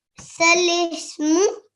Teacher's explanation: on the Hamza Sakin, we should be doing a soft jerk